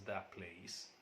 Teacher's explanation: In another phrase like that place, pronounced as that place, here t becomes identical with p. In this case, the assimilation is total.